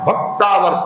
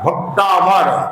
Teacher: पहला जो अक्षर होता है उस पर वजन आएगा